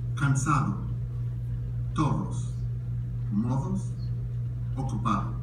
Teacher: The soft D is pronounced as if it's TH.